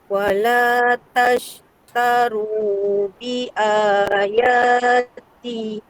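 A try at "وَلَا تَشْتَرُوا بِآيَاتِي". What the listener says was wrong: Cuma T tu panjangkan sikit 2 harakat. Wala tashtaru bi ayat.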